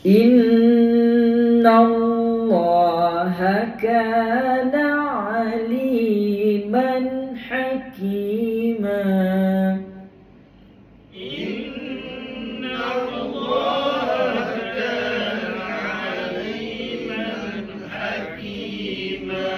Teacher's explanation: Allah lafzu jalalah baca tebal kerana sebelumnya baris atas dua harakat.